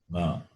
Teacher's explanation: Na is guttural plus nasal, throat plus nose.